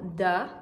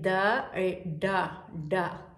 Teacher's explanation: Il y a le D dental, le D touche les dents, da, comme dire dommage, voilà, da.